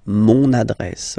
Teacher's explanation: you can hear now this little link so you've got to pronounce this n